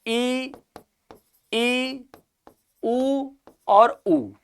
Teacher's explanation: इनके उच्चारण में मुंह लगभग बंद रहता है, यानी खुलता नहीं है। इसलिए कैसे स्वर हो गए ये, संवृत स्वर।